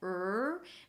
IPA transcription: r